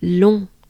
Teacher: So it's a pretty closed up sound. Pretty closed up and nasal.